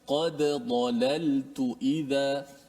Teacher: Kemudian, ayat yang ke-56 tu, di hujung tu, قَدْ ضَلَلْتُ إِذَا قَدْ ضَلَلْ. Hati-hati kalau ada dal yang mesti kita izharkan, matikan dal tu qalqalah, jangan qaddalal, jangan masukkan dal dalam dad. Dal itu kena matikan.